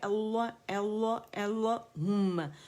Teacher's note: complete rolling ہوگی ہماری lips کی, اور میم پہ ہم ہر غنہ مشدد ہے تو ہم نے 3 کاؤنٹس کا اس پہ غنہ کرنا ہے